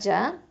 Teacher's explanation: இது வந்து வசத்துல் லிசான் எழுத்து, அதாவது நடுநாவு எழுத்து